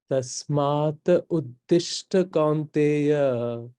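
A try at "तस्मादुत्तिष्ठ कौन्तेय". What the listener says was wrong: इसको एक करो. Tasmaduttishta.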